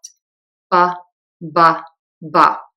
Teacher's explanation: Your voice box is going to be on and vibrating for the B sound. Your lips are going to be closed and then open. Your tongue is neutral, it's just hanging out in your mouth, and the air puffs out. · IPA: /b/